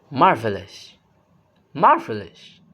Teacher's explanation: The pitch goes up and then comes back down with emphasis. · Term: rise fall tone